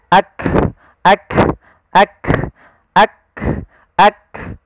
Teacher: Sehingga ketika melafalkan huruf kaf, yang perlu kita bunyikan dulu yang syiddahnya, yaitu kita tahan suaranya, baru kita alirkan nafasnya